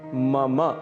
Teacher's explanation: मम अंत में अ की ध्वनि अवश्य आनी चाहिए।